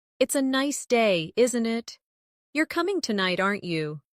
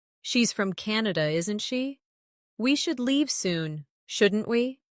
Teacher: making your voice rise slightly at the end of the tag question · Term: tag questions